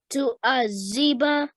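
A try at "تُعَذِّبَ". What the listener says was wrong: Adhiba, the dhal sound. Rather than a z, which is this sound here, we're looking for the. Tu'adhiba.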